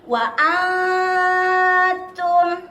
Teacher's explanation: Ikhfa hakiki yaitu samar, jadi antara izhar dan idgham, bukan dibaca jelas dan bukan dibaca dengung.